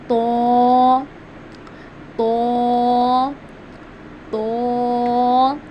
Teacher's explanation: इसको हम पढ़ते हैं जुबान की नोक। यानी कि जो हमारी जुबान की नोक है उसको हम ऊपर के दांतों की जड़ से अदा करते हैं।